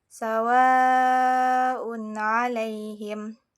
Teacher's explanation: Contohnya dalam Quran surah Albaqarah ayat ke, sawaun alaihim. Di sini terdapat huruf ketentuan mad yang bertemu dengan hamzah yang dibaca sepanjang lima harakat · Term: mad wajib muttasil